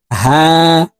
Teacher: এটি বড় হা হলকের মধ্যখান থেকে উচ্চারণ করব। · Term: ছোট হা